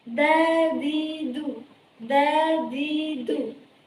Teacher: Huruf dal di sini apabila ia dilatinkan ke dalam bahasa Indonesia maka menjadi huruf D. Dan apabila ia diucapkan maka makhrajnya itu terletak pada lidah depan dan dibaca menjadi dadidu, dadidu.